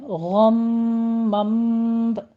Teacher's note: پہلے غین کو پر پڑھنا ہے، پھر میم کے اوپر غنہ کرنا ہے، 2 کاؤنٹ کرنے ہیں